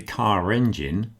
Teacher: So I put that r back in there to separate the r sound from the e sound. Okay? I'm separating the vowels by reinstating the r sound.